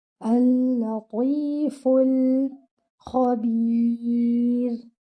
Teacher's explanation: Your kha should be heavy. Your ba is light. And your ra at the end should be light too, because it is preceded by a ya.